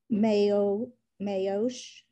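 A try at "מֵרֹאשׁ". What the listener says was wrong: So don't forget to pronounce the resh.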